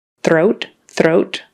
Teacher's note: you put your tongue out for the th and then you got to get your tongue way back in the back to make the r